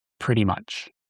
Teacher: Notice how the T's are pronounced as D's.